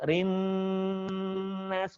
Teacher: rinnya dikasih warna, tahan di rongga hidung. Rinnas, gunnah, ingat gunnah.